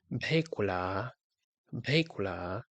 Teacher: The third one is B and it's pronounced with the ghwãs sound, so the rounded K sound, the K sound with rounded lips, and it will be pronounced something like bhekula, bhekula.